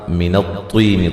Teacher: طا کو موٹا ادا کریں گے ، طی یا مدہ ہے، کا ہی یا لین ہے، آتی